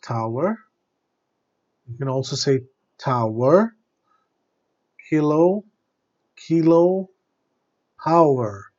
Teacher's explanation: there's a kind of explosion happening in your mouth when you say T, K, and P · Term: plosives